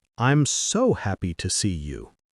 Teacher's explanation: That little so and the rising tone make a big difference.